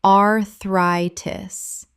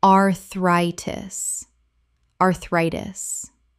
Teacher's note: The stress falls on the second syllable. sounds like the word try.